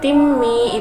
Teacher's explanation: bacaan idgham bi gunnah sebab kasratan bertemu dengan huruf mim yang mana mimnya itu sendiri bacaan gunnah sebab mim bertasydid.